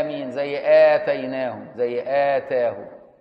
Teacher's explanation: يقول لك امين مستريحه كده بمد البدل. ومد البدل حركتين